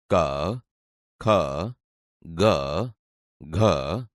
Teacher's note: તમે જોશો કે તે ગળામાંથી બોલાય છે, તેથી આ કંઠ્ય વ્યંજન છે.